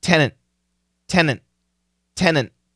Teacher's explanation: we don't have to finish the T tenant but we should probably stop the T tenant tenant tenant but we stop it okay because it's not